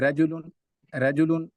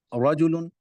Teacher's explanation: رجل یہ باریک ہے، رجل یہ پر ہے، یہ فرق ہے